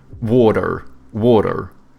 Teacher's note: Americans, they have like soft T's and then they pronounce their R's